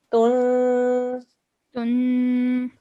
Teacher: Ta with the dhammatain, a 2-second nasal sound.